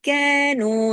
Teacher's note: دونوں باریک حرف ہیں، دونوں دو دو حرکات کھینچیں گے